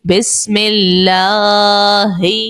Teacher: ہم نے لام کو باریک پڑھا. کس سبب سے؟ کیونکہ اللہ کے لام سے پہلے زیر تھا، اسی لیے باریک پڑھا.